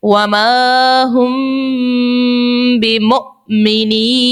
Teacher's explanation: اب مثال سے سمجھتے ہیں، مثال ہمارے پاس ہے وَمَا هُم بِمُؤْمِنِينَ، میم ساکن ہے، میم کے اوپر علامت جزم ہے، میم ساکن کے بعد دیکھیے لفظ با آ گئی ہے، تو یہاں پر ہم نے لگانا ہے اخفاء شفوی کا قاعدہ اور یہاں غنہ بھی کریں گے۔